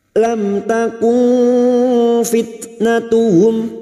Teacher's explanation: nun sukun bertemu fa ikhfa hakiki, kita samarkan bunyi nun sukun dan mendengung selama 3 harokat. Fitnatuhum, tak sukun yang memiliki sifat syiddah dan hamas, maka bunyinya fit.